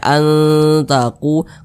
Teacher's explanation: baca anqu Jangan dibaca Ang jangan tapi dibaca anqu kemudian didengungkan jadi suaranya itu kita tahan kita panjangkan [Musik] sejenak begitu An begitu anqu dengan lu ini sama nih